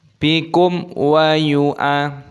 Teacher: mim sukun bertemu dengan wawu hukumnya dibaca idhar syafawi, dibaca jelas, tidak boleh didengungkan